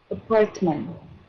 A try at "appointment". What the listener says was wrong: Nhẹ cái âm thứ ba nữa đi.